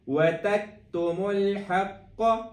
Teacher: یہاں پہ کاف باریک والی ہے، اس پہ کلکلا بھی نہیں کرنا ہے، اس پہ ہلانا بھی نہیں ہے، اس پہ ساکن کو پراپر ساکن کی طرح کم کرنا ہے۔